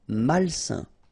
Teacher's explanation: A-I-N together, it's a nasal and it's un.